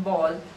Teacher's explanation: It is a bilabial, voiced, plosive.